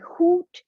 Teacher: Hoot is a rounded vowel, the oo, compared to the heat.